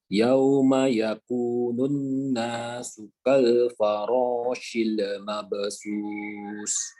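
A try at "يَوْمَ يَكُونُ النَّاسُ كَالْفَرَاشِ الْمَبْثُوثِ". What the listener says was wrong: Oh iya, ini nunnya jangan lupa dipanjangkan lebih lama lagi, lebih panjang. Yauma yakunun, ya, nun nasu kal farashil mabsus. Satu lagi, lam, usahakan pada saat dia diberikan tanda baca sukun seperti ini ya, sukun kan, dia jangan sampai memantul atau qalqalah. Farashil, shil, jangan sampai ada mantul ke belakang lagi, tapi tahan dia. Farashil, farashil mabsus. Jangan sampai mundur lagi. Farashil, ashil mabsus, ini dihindari.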